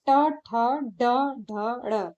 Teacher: उच्चारण स्थान मूर्धा होता है, इसलिए इन्हें मूर्धन्य व्यंजन कहा जाता है